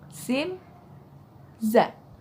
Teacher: huruf Sin dan Za akan keluar ketika ujung lidah kita menyentuh gigi seri bawah kita coba sien zat kalau misalkan zell itu menyentuh gigi seri atas